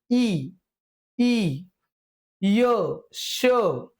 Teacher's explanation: इ हे आपले दोन स्वर ज्यावेळेस आपण यांचा उच्चार करतोय त्यावेळेस आपली जीभ मित्रांनो आपल्या या टाळूच्या भागाकडे येते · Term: तालव्यवर्ण